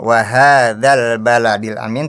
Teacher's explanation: harusnya panjang mad dua harakat